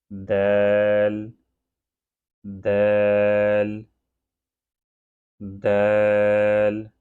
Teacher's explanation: جب زبان کی نوک سامنے والے اوپر والے دونوں دانتوں کی جڑوں سے لگتی ہے تو یہ لیٹر دال ادا ہوتا ہے۔ جب آپ زبان کی جو نوک ہے جو باہر کی طرف آ رہی ہے، زبان کی نوک وہ سامنے والے اور اوپر والے دونوں دانتوں کی جڑوں سے لگے تو اس وقت دال ادا ہوتا ہے۔